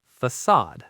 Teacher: And it tells you the C makes an S sound. The stress is on the second syllable. We say facade.